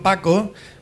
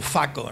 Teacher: la p se permuta con f por ejemplo Paco se se pone como FAO no la f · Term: permutación